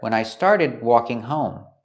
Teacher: So we see the D in started is a stop D. We don't say when I started, we stop the air.